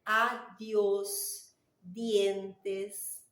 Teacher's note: la letra D, seguida de I, tem um sonido interdental